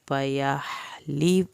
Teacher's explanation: ہا کو حلق سے پڑھنا ہے